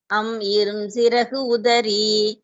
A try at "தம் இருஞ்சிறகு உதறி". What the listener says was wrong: அம் இல்ல தம் தம் இருஞ்சிறகு உதறி